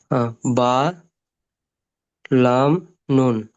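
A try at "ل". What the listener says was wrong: মাশাআল্লাহ ভাই, অনেক সুন্দর পড়ছেন, কিন্তু একটু টান দেবেন। দেখেন এখানে লাম 3 আলিফ পরিমাণ টান রয়েছে, নুন ও কিন্তু 3 আলিফ পরিমাণ টান রয়েছে, তাহলে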